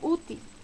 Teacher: Por ejemplo, la palabra útil. Noten que útil tiene el mayor golpe de voz en U y termina en consonante L, por tanto lleva tilde.